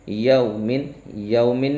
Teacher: lesson number 9 میں قواعد ہے، واولین کا قاعدہ ہے تو واولین کو بغیر کھینچے بغیر جھٹکا دیے نرمی سے معروف پڑھیں گے